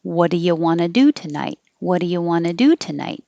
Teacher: it'll end on night coming down because it's a WH question